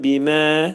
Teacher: Burada mə iki səs miqdarında uzadılır. İncə samitlər qrupuna aiddir.